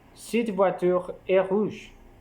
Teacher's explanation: l'intonation est descendante à la fin d'un énoncé déclaratif